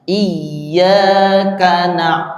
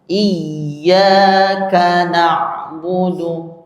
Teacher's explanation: kafnya tidak boleh dibaca terpisah apalagi dibaca panjang